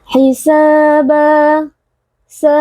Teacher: Alif yang sebelumnya berharakat fathah dibaca panjang dua harakat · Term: Mad thaii